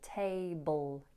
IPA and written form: ˈteɪbəl (table)